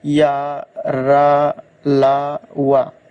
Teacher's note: हवा बिना रगड़ खाए मुंह से बाहर निकल जाती है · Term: अंतस्थ व्यंजन